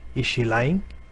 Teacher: if you're saying is she lying, so there is a rise in your pitch, and that's what is depicted by these rising patterns.